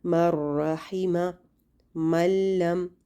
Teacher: جب لام اور را آتے ہیں نون ساکنہ یا نون تنوین کے بعد تو اس میں غنہ بالکل نہیں کیا جاتا. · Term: ادغام بلا غنہ